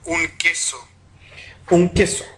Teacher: Veamos ahora la postpalatal oclusiva áfona.